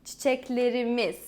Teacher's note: So I stress on the imiz, the possessive suffix.